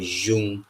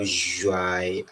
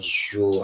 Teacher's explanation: we have a kind of labialized form of this palatal sound, this palate labial sound, Ju